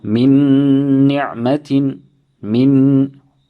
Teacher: idgham of one noon into the next